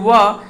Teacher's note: यानी दांत और ओठ से दोनों को मिला करके जो इसका उच्चारण होता है, जैसे व, तो ये व जो बनता है वो इसी को दंतोष्ठ कहा जाता है।